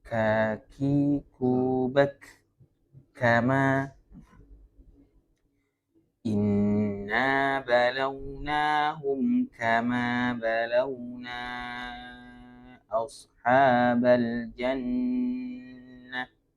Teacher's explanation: Tapi kalau ini huruf kaf. Kaf dalam bahasa Arab ada sifat hams, sifat mengalirnya nafas ya.